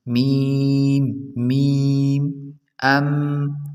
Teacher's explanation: comes out from the dry part of the both lips ، یعنی دونوں ہونٹوں کی خشکی سے میم ادا ہوتا ہے،